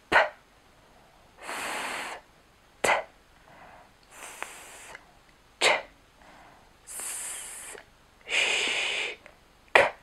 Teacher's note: spoluhlasky v prvom aj v druhom riadku sú pekne usporiadané podľa miesta artikulácie Čiže od vonkajška úst až po jej zadok